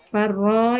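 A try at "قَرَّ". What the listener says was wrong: farun itu bukan far tapi qor ibu.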